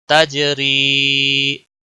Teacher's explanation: جیم پہ قلقلہ ہوگا، را یا زیر ری، را باریک ہوگا، آگے مد ہے، ایک الف کے برابر کھینچ کر پڑھیں گے. · یا مدہ ہے، یا ساکن سے پہلے زیر ہے، جیم پہ کلکلا ہوگا. تجری، را باریک پڑھا جائے گا یہاں پر کیونکہ را کے نیچے زیر ہے